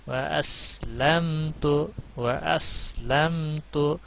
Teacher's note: میم کے اوپر کلکلا یا کچھ اور آواز نہیں ہونی چاہیے، مجہول آواز نہیں ہونی چاہیے، اس سے بچا جائے.